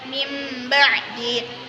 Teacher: Apabila ada nun sukun atau tanwin bertemu dengan huruf ba, maka hukum bacaannya disebut iqlab. Cara membacanya dengan menukar nun sukun dengan mim.